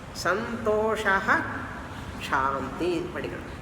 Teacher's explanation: Before shakara, the visarga has to be pronounced fully. · Afterwards, shanti is there. When shakara comes, you have to pronounce that shaha, visarga completely.